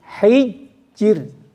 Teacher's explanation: bunyinya gini hijjir bukan er tapi Ir